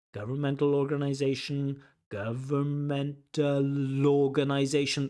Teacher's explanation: If a word begins with a vowel organization and the word before ends with a consonant like a c- governmental that last consonant l governmental will link on to the next word organization. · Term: catenation